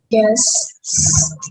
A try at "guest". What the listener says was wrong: Yeah, it's close, but I don't hear the T. Guest. Guest. St. Like start. Guest. Guess, and then you have that T, right?